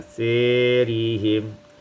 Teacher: Pada ayat 46, asarihim imalatu fathatis sa wal alif, imalah fathah sa dan alif menjadi asirihim